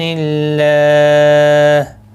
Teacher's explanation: اللہ کا لام زیر کی وجہ سے باریک پڑھا جائے گا